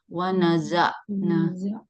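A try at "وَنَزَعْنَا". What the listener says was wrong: Ain di tengah tenggorokan. Wanaza'na. Kalau tadi yang baca itu dia belum naik ke tengah tenggorokan, dia masih di pangkal tenggorokan. Jadinya bunyi ainnya nggak sempurna.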